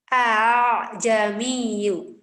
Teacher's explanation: Tashilnya dicampur antara hamzah dengan alif